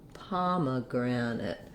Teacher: have so far it's short and reduced on that second syllable then we're going to have some secondary stress on the granite part so we have our letter a saying our ah vowel like · letter e in pomegranate is going to be a schwa so it sounds like pa ma that's what we have so